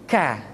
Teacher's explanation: diucapkan dengan mengangkat pangkal lidah kita ke posisi di depan huruf qaf kah diucapkan dengan mengalirkan nafas kita kah yang qwords terdengar ada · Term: huruf k